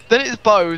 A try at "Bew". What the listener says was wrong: No, your accent is making it sound you're saying Bo. It's Bew. It's not Bo. It's that's Bew. Like beauty in our language.